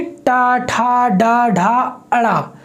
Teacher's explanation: फिर है टा वर्ग यानी टा, ठा, डा, ढा, अड़ा। तो जब आप टा वर्ग को बोलते हैं तो भी आपके जो जीभ की नोक है वो आपके मूर्धा वाले हिस्से से टकराती है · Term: मूर्धन्य वर्ण